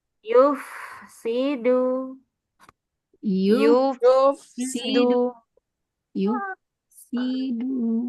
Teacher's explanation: Fa sukun dialirkan dulu secara sempurna